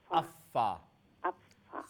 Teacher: উপরে দুই দাঁতের আগা এজ জি নিচে ঠোঁটের ওয়েট পার্টের সাথে লাগে